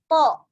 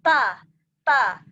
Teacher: Jadi to, ujungnya di gusi gigi seri atas, pangkal lidahnya terangkat, menutupi langit-langit.